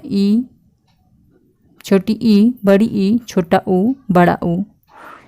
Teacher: इन स्वरों को बोलने में हमारी जीभ ऊपर की ओर थोड़ा सा गोलाई में उठती है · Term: संवृत स्वर, संवृत्त स्वर